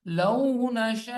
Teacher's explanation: یہاں پہ بڑی مد ہے، 5 الف کی مقدار لمبا کریں گے